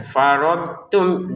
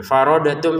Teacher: Faradtum, dotnya jangan dipantulkan. Faradatum ya salah. Karena huruf dot ini bukan baju di toko, jadi dia tidak boleh dipantulkan.